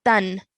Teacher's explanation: So that means that when we have this noon sakin, we have to produce a clear sound. So we have to say tan like that, and no prolonged nasal sound is made.